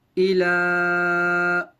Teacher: لام کے اوپر کھڑا زبر ہے، کھڑا زبر برابر ہوتا ہے الف مدہ کے، لہٰذا کھڑے زبر کی طرح اسے بھی ایک الف کی مقدار کھینچ کر پڑھیں گے. ہا کو نون میں ملانا ہے غنہ کے ساتھ کیونکہ نون پر تشدید ہے.